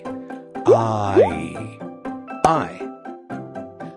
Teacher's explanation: The sound of long I is actually two sounds. The ah sound and long E.